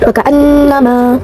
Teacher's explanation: Terdapat guna, yaitu nun bertasydid. Cara bacanya ditahan serta memakai dengung ke hidung.